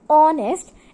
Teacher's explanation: in honest and honorable h is not sounded so these words begin with a vowel sound